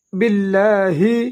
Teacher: آمن تپشتو آمنتو باللہ با کو لام کے ساتھ ملائیں گے، لام کو دو حرکات لمبا ادا کریں گے